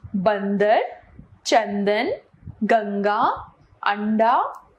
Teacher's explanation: जिस स्वर का उच्चारण केवल नाक से किया जाता है उसे अनुस्वार कहते हैं